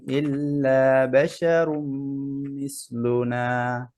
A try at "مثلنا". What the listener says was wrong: আবার মিসলুন হয়ে গেছে স্যার মিসলুনা মিস আরো জিব্বার আগা বের করেন মিসলুনা